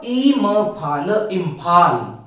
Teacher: अगला उदाहरण है इम्फाल, अनुस्वार के आगे आने वाला व्यंजन फ है, जो प वर्ग का दूसरा व्यंजन है। इसीलिए अनुस्वार का उच्चारण होगा म की तरह